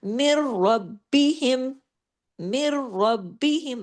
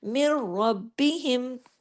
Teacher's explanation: یہاں پہ ہم نے مر فوراً جا کے را کو ہیوی کر دیا، لیکن آگے دیکھیں پھر با کے اوپر تشدید ہے، با کہہ رہا ہے تشدید کے ساتھ ہوں، 2 با ہیں، اور رب ایک با پڑھا گیا، بی دوسرا با پڑھا گیا۔